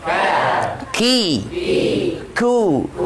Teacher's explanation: Kalau kaf masih pangkal tenggorok, pangkal lidah, tapi agak maju sedikit.